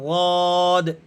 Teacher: بائیں سائڈ کی زبان کی کروٹ کو اوپر والی ڈاڑوں سے ملائیں اور اس لفظ کو ادا کریں غود، تب بھی نکل جائے گا۔